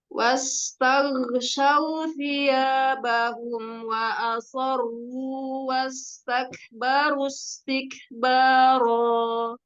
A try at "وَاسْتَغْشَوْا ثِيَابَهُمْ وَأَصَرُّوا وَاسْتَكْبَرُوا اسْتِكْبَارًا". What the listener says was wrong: Kasih ke ghain. Ghain masih agak tumpah. Kurang tebal, kurang mangkat pangkal lidahnya.